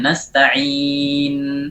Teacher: Pada saat nasta'in ada nun sakin, nun akhir harus diberikan gunnahnya.